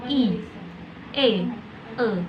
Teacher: vokal tak bulat, vokal yang diucapkan dengan bentuk bibir tidak bulat atau melebar